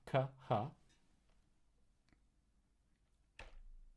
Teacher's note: K to H, both in the back of the mouth